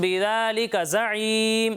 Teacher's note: میم ساکن کے بعد اگر حرف با آ جائے تو وہاں پر اکفائے شفوی ہوگا اور وہاں پر ہم غنہ بھی کریں گے